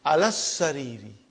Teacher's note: I did not pronounce alif, I did not pronounce lam